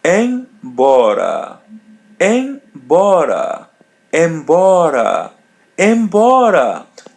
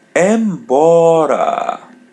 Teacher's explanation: Letter M is pronounced as a light N.